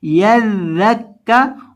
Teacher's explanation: ذال کو جب بھی پڑھتے ہیں اس کو نرمی کے ساتھ پڑھتے ہیں اور اس کے اندر سیٹی کی آواز پیدا نہیں کرتے